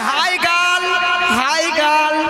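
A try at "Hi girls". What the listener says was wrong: গাল নয় মাসি, বলো গার্লস।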